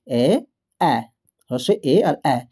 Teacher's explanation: এই ৩ টে ধ্বনি উচ্চারণ করতে গিয়ে দেখো আমাদের ঠোঁট কিন্তু প্রসারিত হয়ে যাচ্ছে, মানে বড় হয়ে যাচ্ছে